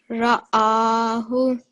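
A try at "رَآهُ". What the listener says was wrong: Just with the ra, it's a thick letter because it has a fatha on top of it. So if you just try and make that a bit round, so ra, ra'ahu.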